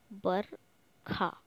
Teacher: व चेंज हो जाता है ब में, व चेंज हो जाएगा ब में, तो व को ब बोलते हैं